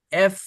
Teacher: এফ যখন বলবেন আপনার নিচের দাঁত উপরের ঠোঁটের সাথে বলার সাথে সাথে লেগে যাবে আর বাতাস বের হইতে থাকবে